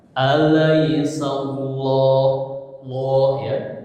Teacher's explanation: ada huruf sin sebelum lafaz Allah, harokatnya apa? Fathah. Jadi apa hukumnya? Tebal, tafkhim ya.